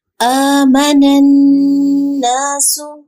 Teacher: نون شدید کی آواز ناک میں لے کے جائیں گے